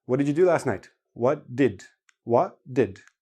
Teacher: if you listen to native speakers hardly anybody actually pronounces the t